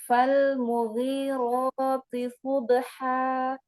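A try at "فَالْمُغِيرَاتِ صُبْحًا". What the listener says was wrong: Lam sukun jangan terburu-buru. Kasih sifatul hurufnya. Subha. Iya, ba sukunnya qalqalahnya disempurnakan.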